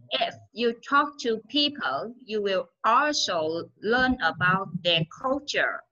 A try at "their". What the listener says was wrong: Learn about their culture. about their, their. Âm TH của chị nó chưa có mang sát khí.